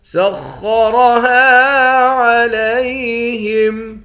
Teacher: خا اور را دونوں کو موٹا پڑھیں گے، دونوں موٹے حرف میں سے ہیں۔ ہاں کے بعد الف ہے، الف حروف مدہ ہے، ایک الف کی مقدار کھینچیں گے۔